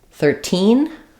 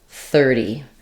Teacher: if I'm talking about 13 versus 30, I'm probably going to stress on teen.